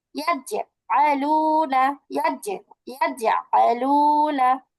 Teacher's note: জিম শিন ইয়া ঠিক জিহ্বার মাঝখানটা বরাবর উপরের তালুর সঙ্গে লাগিয়ে এই 3টি হরফ উচ্চারিত হয়।